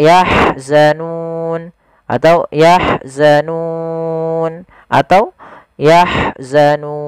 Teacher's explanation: Kita boleh memanjangkan 2 harokat, 4 harokat, ataupun 6 harokat. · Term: mad arid disukun